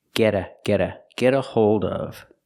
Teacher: We see that T in get changes to a fast D.